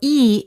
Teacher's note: For example, E is a front vowel because the front part of the tongue goes up in front of the mouth.